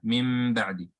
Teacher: So here you have a noon sakina followed by ba. You change the noon to mim, and you do ghunna.